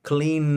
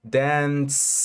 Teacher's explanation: La N sí vibra y la S no vibra.